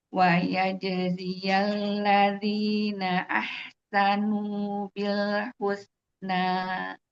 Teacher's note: di ahsanu ini bagus rokhawahnya, suara huruf H-nya mengalir. Di sin ini masih belum.